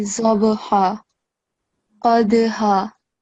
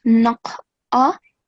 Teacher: So, as I've mentioned to you in the previous surah, the letters highlighted in red, they are the letters of qalqala, so you have to perform a jerking sound